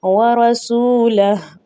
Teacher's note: ذَلِكَ بِأَنَّهُمْ شَاقُّوا اللَّهَ وَرَسُولَهُ، آگے وقف جائز ہے، ہم نے رسولہ نہیں کرنا، صرف کیا کرنا ہے؟ حرکت کو الٹا پیش کو ہم نے گرا دینا ہے، ہا کو ہم نے باقی رکھنا ہے